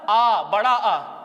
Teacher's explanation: अगला भेद है विवृत स्वर है, मुख पूरा खुल जाता है।